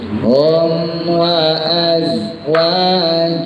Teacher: Hum wa az bersih. Hum wa azwajuhum sama mim mati ketemu fa, izhar syafawi.